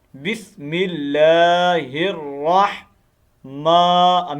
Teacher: میم کو تھوڑا لمبا کرنا ہے ایک الف کے مطابق ، میم کھڑی زبر ما ہے نا، کھڑی زبر آپ کو